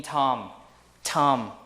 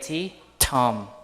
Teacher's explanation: T in tom is aspirated